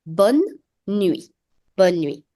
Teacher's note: Now be mindful, you will not pronounce the last E of bonne. So this is not pronounced as bonne.